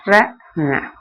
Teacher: நாவினது நுனி மேல் நோக்கி சென்று அன்னத்தை தொடும்போது ர பிறக்கும்.